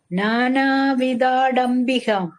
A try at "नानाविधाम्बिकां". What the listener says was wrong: அது வந்து மா டா இல்ல மா. அம்பிகாம் மா. விதாம் அம்பிகாம். ஆமா. விதாம் அம்பிகாம்.